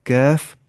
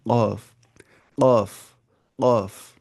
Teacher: कैफ का आगे से लाना है, कॉफ से पीछे लाना है